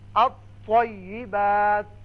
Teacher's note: الف لام میں لام نہیں پڑھا جائے گا بلکہ طا مشدد آئے گا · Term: حروف شمسی